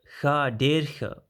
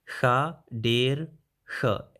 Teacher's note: be careful to the der with an retroflex d sound